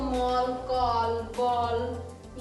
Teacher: ये अंग्रेजी शब्द हैं जिसमें हम अर्धचंद्र लगा देते हैं, तो इसको मॉल, कॉल, बॉल, ये सब बोलेंगे। ये जो अर्धचंद्र है, ये आ और ओ के बीच की ध्वनि है।